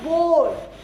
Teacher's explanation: सारी की सारी हवा एकदम से मुंह के जरिए बाहर निकल रही है। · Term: ऑरल साउंड्स